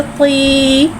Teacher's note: या साकिन है, या साकिन से पहले देर आ रहा है, या मद्दा हो रहा है, लिहाजा या मद्दा को एक अलिफ यानी 2 हरकत के बराबर खींच के पढ़ेंगे। तो या ज़ेर ती, तो तू ती, तो तू ती, तो तू ती।